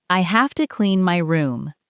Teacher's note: Now give more energy to clean and room.